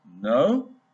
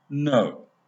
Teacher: a word pronounced with a rising tone, like a question, no, will differ in meaning from the same word pronounced with a falling tone, like an emphatic denial, English, no.